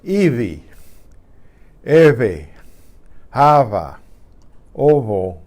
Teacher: when it's between vowels, it's almost like a B that didn't quite explode. It's a buzz, I call it.